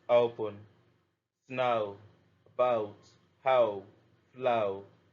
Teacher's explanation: /əʊ/ long O sound, impure English sound